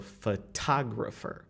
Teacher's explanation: So photographer, so tag. That O that is located in the stress syllable is going to transform into ah. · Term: long ah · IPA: [ɑ]